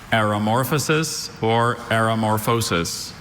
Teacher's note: Biological evolution marked by general increase in degree of organization without sharp specialization. There is one of those infamous schwa sounds, second syllable.